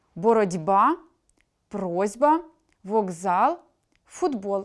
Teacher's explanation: Глухі перед дзвінкими вимовляються дзвінко, тобто уподібнюються за дзвінкістю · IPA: [бород’ба], [проз’ба], [воґзал], [фудбол]